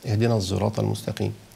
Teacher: المستقيم فقالوا ده حرف فرعي لانه حرف هنا ايه اختلط بحرفين خد من الصاد التفخيم خد من ازاي صفه الجهر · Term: الصاد المشم